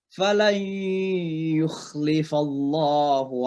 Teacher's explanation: nun mati ketemu dengan ya, idgham bi gunnah. Jadi suara nun masuk ke ya.